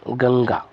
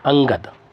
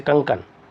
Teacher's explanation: अगर आप अपनी नासिका को बंद करेंगे तो आप गंगा शब्द का उच्चारण नहीं कर पाएंगे। जैसे अंगद, अगर आप नासिका को बंद करेंगे तो अंगद शब्द का निर्माण, यानी अंगद शब्द की ध्वनि नहीं आएगी। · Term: अनुस्वार